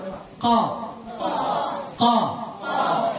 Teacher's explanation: Kalau Ka itu agak ke depan sikit